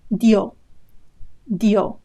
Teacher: Again, a diphthong where in dio, I-O, they form a diphthong, two vowels together. Dio with a stress on the O. So the I is very short. It's just an I sound, very short.